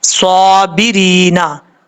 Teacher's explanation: اب اس کے بعد ہے وَبَشِّرِ الصَّابِرِينَ، واو زبر وا، با شین زبر بش، شین زیر شی، وبشی، را صاد زیر رس، صاد کھڑا زبر صا، وبشر الصا، با زیر بی، را یا زیر ری، نون زبر نا، صابرینا، صاد فل موت پڑھا جائے گا، موٹا پڑھا جائے گا، کھڑا زبر ہے، ایک الف کی مقدار لمبا کر کے پڑھیں گے۔ جب یہاں پہ رکیں گے، سٹاپ کریں گے تو نون کو ساکن کر دیں گے، وَبَشِّرِ الصَّابِرِينَ، اس طریقے سے۔